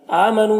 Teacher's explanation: حمزہ میں کھڑا زبر ہے، یہ الف مدہ کی طرح ہوتا ہے تو اسے بھی ایک الف کے برابر کھینچیں گے۔ نو میں واو مدہ ہے، اس سے بھی ایک الف کے برابر کھینچیں گے۔